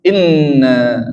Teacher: Berarti kalau gunnah kita baca ditahan. Ya, ditahan, tidak boleh terburu-buru, dia dengung di mana? Hidung. Inna, jadi ditahan.